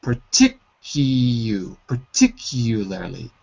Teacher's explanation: So the trick is, it looks like par, but when we say it quickly, it's more like per